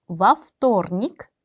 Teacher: 전치사에는 강세가 없다. 전치사를 발음할 때는 뒤에 명사랑 한 단어인 것처럼 발음을 해야 한다. 근데 вторник의 강세가 o에 있기 때문에 a로 발음을 해서 во вторник가 되는 거예요.